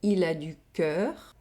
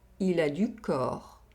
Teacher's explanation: Here, we have a difference in oral vowel sound. We have the [œ] sound in the first sentence, and the [ɔ] sound in the second sentence.